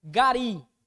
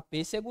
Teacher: gari é oxítona pêssego é proparoxítona